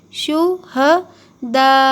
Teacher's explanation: کیونکہ یہاں پر الف ہے، الف مدہ بھی ہوگا اور اس کے اوپر یہ بڑا مد بھی آیا تو اسے اور ڈبل کھینچیں گے